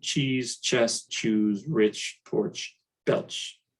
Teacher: the tongue first touches behind the alveolar ridge making a stop and then it pulls back to make a fricative · this picture so one english affricate that's templisha which is cha that's the voiceless post-alveolar affricate